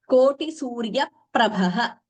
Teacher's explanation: Very distinctly that extra P, which is not written, not shown in the script, but it is heard by chanting. That is the beauty of the Sanskritam chants, the Dvitvam.